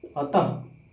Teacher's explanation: उच्चारण में क्या निकलती है? ह की ध्वनि निकलती है। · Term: विसर्ग